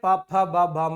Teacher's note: ಓಷ್ಟ್ಯ mainly ನಾವು ತುಟಿಯ ಸಹಾಯದಿಂದ ಅಥವಾ ತುಟಿಗಳ ಸಹಾಯದಿಂದ ಉಚ್ಚರಿಸಲ್ಪಡುವಂತ ಪದಗಳಾಗಿರುತ್ತೆ